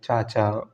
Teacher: च वर्ण का उच्चारण तालव्य से होता है